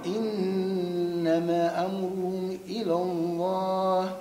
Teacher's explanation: زيد شوية في المد واعمل غنة النون